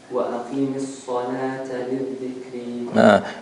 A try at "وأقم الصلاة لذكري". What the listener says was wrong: No, there's no shadda on the dal. You are making a shadda on the dal. وأقيم.